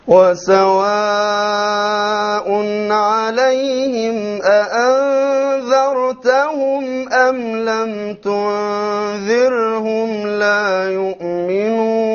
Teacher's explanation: notice how he said the أأنذرت, the very crisp two hamzas · Here is a silent ra preceded by a kasra, so light. So notice now how the shaykh will change between dhar with a heavy ra and dhir with a light ra